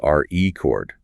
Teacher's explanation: stress the first syllable, RE-cord, it is a noun